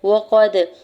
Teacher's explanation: قاف کے زبر کو دال ساکن کے ساتھ ملاتے ہوئے دال ساکن پہ قلقلہ کریں گے